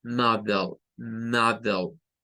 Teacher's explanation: es como que se perdiera la E que está entre la D y la L. Y ahí solo suena L. Lo que sucede es que la L ya lleva un sonido como de E al principio.